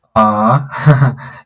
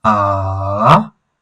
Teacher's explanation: You see there's that kind of falling sense in it or that rift valley as you see how how how it is drawn. It is falling and rising. So as it is you also fall as you speak. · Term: the third tone